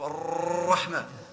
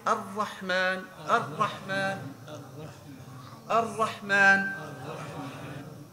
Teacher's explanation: At that place, if you can reach it, that's the correct place of Ra. To avoid tikrar, to avoid vibration. When you read, for example, Ar-Rahman, I don't want it to be a Kalashnikov, Ar-Rahman.